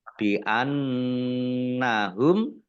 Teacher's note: Zalika, dal fathah berdiri, mat tobi'i, bi annahum, nun tasdid dibaca gunnah atau mendengung, ditahan 2 harokat